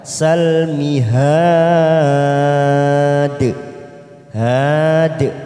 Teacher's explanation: Kita panjangkan 4 harokat mad arid disukun, lalu ujungnya kita pantulkan, namanya bacaan qalqalah kubra karena ada huruf dal di akhir kalimat saat diwakafkan, namanya bacaan qalqalah kubra.